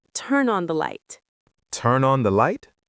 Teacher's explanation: You linked turn and on to make turn on.